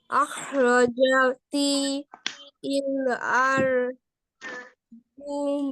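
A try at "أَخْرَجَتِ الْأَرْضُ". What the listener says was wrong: আখরাজাতিল আরদু, শেষ। আখরাজাতিল আরদু, এটা এক শব্দ।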